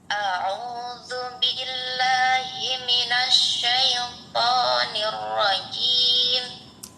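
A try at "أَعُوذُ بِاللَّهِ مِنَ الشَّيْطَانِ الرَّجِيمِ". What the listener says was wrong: Bibirnya jangan bergerak ya. Allah. Ngiru, ngiru, ngiru, ngiru. A'udzu billah. Syaifu. ya, tinggal roknya aja sedikit lagi ya. Ro. Nanti di rumah pakai ini ya. Pakai apa sih? Kaca. Ya, pakai cermin. Pakai cermin. Ini bibir masih bergerak enggak gitu. Supaya jelas ya, supaya jelas.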